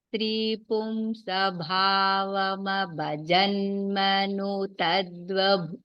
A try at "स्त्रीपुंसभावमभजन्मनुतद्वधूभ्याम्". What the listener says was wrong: don't separate any words भगिनी you chant one stretch